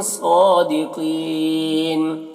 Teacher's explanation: صاد کو پر پڑھیں گے، حروف مستعلیہ میں سے ہے، کھڑا زبر ہے، ایک الف کے برابر کھینچیں.